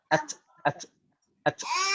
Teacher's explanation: Ta itu hamasnya ya di makhrajnya ta.